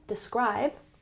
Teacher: emphasis on the second syllable, describe